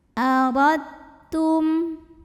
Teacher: Maka cara membaca dal sukunnya adalah masuk atau lebur ke ta, ditekan saja ya. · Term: idgham mutajanisain